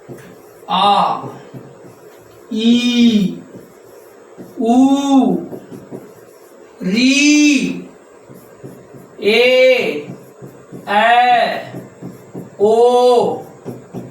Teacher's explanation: जिसके उच्चारण में ह्रस्व से दुगना समय लगता हो उसे हम दीर्घ स्वर कहते हैं